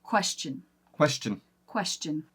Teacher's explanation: We actually turn that last part of the word into a CH sound